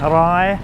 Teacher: The long sara a and the yor yak makes like a long I as opposed to a short I